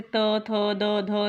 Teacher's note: त वर्ग का जो उच्चारण स्थान है उसे दंत कहा जाता है